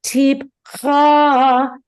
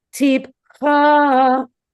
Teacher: Tipcha, it does go down after, but the first movement is up. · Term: goes up